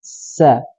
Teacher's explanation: Sofir, yaitu tajamnya suara karena dia keluar dari celah yang sempit antara ujung lidah dengan gigi seri atas. Gampangnya adalah sofir itu adalah suara yang tajam ketika mengeluarkan huruf-hurufnya.